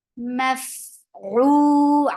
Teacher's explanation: Maf for fatha open jaws and attached with fa. Fa will get hums, and hums is a flow of breath. Maf'u ain from your throat, make it 2 counts long.